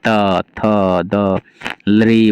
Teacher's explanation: इन सारे वर्णों का उच्चारण दांत की सहायता से होता है, अर्थात जीभ जब दांत में टच करता है तो जैसे त थ द लृ बोल के देखेंगे ना, इसमें दांत टच करता है जीभ से, इसलिए इनका उच्चारण स्थान दंत हो गया और यही कारण है कि इनको, इन वर्णों को दंत्य कहा जाता है।